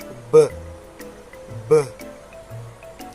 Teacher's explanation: So use your hands, touch your neck, and say B, B. You can feel it vibrate.